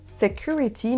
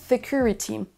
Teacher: l'extrait suivant monsieur Macron ne nous dit pas security mais security il ajoute un son th au début de ce mot alors qu'il n'en faut pas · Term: hyper correction